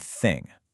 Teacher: Notice how the tip of your tongue pushes slightly between your teeth. That's a dental sound.